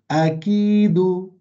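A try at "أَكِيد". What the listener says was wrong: Not, don't take away the ya as well. A'kid.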